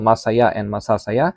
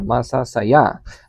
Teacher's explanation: the first word and the second word have the same stress on the last syllable.